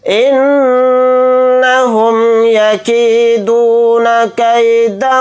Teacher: نون کے اوپر تشدید ہے تو نون کے اندر غنہ کریں گے